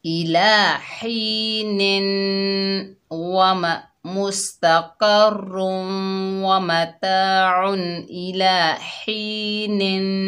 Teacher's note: हा हलक के दरमियान से अदा करेंगे। ही, नून के नीचे ज़ेर हैं तो वसल की हालत में गुन्ना करेंगे